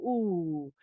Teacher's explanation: that's a back of the mouth sound. So, the tongue is kind of gesturing towards the back of the mouth. And it's also stimulating muscles that are the sort of opposite of smiling muscles. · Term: back vowel